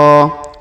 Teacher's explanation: huruf qo kita panjangkan dua harakat karena Alif kecil di atasnya dan juga alif bengkok di depannya